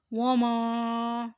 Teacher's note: فَأُمُّهُ ہاویہ وَمَا، یہاں میم کے ساتھ الف اور اوپر مد ہے اور ساتھ زبر، اور مد آ جائے تو یہ 2 الف کی مقدار پر آ جاتا ہے، اس لیے اسے اچھی طرح کھینچ کر ادا کریں۔ وَمَا أَدْرَاكَ، دال کے اوپر جزم ہے اس لیے یہ قلقلہ یعنی دال کی آواز کو ہلا کر ادا کریں۔